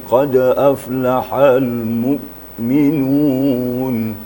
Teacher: Jadi suaranya terputus. Jadi sifat hamzah itu syiddah ya. Tidak ada pantulan dan tidak ada rakhawanya. Bukan pula tawassut. Tapi suara kita tidak mengalir.